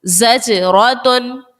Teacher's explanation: زا سیٹی والے حروف میں سے ہے، اس کو سیٹی کے ساتھ ادا کیجئے · یہاں پر دیکھیے گا جیم جو ہے یہ حرف قلقلہ کا ہے اور یہ ساکن بھی ہے، اسی لیے جیم کو خوب ظاہر کر کے ادا کیا